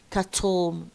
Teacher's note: cattle, don't say cattle. cattle here la, the position or the release of la is lateral.